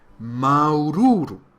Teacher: Comptez bien les U, il y en a 4 en tout. Remarquez qu'il n'y a pas d'occlusive glottale, mais il y a une longueur sur le A.